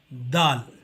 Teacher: To pronounce dal, we have to take the tip of the tongue and keep it on the upper frontal teeth